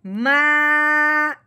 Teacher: यहाँ बात समझने वाली है कि अलिफ से पहले हरफ पे जब जबर आ जाए तो उस हरफ को एक अलिफ के बराबर लंबा कर देते हैं। अब हमने मीम को लंबा करना है एक अलिफ के बराबर, क्यों कि अलिफ से पहले जबर आ गई है।